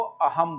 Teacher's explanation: स के बदले ह बोलेंगे, तो इसलिए असम को तो अहम बोलते हैं।